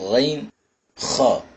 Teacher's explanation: the nearest part of the throat. தொண்டையினுடைய ஆரம்ப பாகத்திலிருந்து இந்த எழுத்துக்கள் உச்சரிக்கப்படும். தொண்டையினுடைய ஆரம்ப பாகம் அத்னல் ஹல்க்.